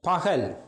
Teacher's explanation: 2 உயிர்களுக்கு இடையிலும் எரல ல ஆகிய 5 இடையினமைகளுக்கும் மகரம் தவிர்ந்த ஏனி 5 இடையினமைகளை அடுத்தும் இந்த ககரம் வருகின்ற போது அது ஏச்சாக ஒலிக்கும். பகல் H சவுண்டில் வருகிறது